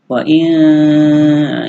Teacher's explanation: wa in ini ikhfa ya, berdengung ya